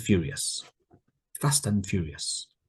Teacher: You can hear there's no d sound.